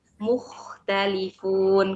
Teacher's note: hati-hati di huruf kho-nya seperti kurang dialirkan. Jadi kayak terhenti. Tidak terdengar seraknya.